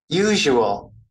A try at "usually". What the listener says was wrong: Sorry, nó thiếu cái lì, thiếu cái y.